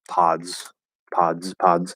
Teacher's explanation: a d and a z next to each other um because the d uh at least in most cases is going to change that s into a z sound · you're gonna have a d and a z next to each other